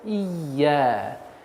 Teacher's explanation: Теперь нужно обращать внимание, чтобы звук «я» удваивался. «Ия». Не перестараться «ия», а нет.